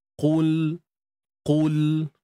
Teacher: Huruf qaf ni angkat pangkal lidah Angkat pangkal lidah untuk kita dapatkan sifat tebalnya.